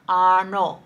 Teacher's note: you should be using the retroflex na, aanú. Do not say aanú, aanú.